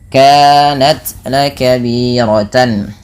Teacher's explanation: suara tannya dibaca dengan jelas karena adanya tanwin bertemu dengan huruf hamzah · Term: izhar halqi